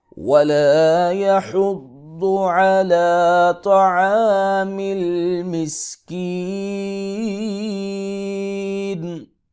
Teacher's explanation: زبر ہے، اس کو ایک الف کے برابر لمبا کریں گے، ضاد حروف مستعلیہ میں سے ہے، اس کو موٹا کریں گے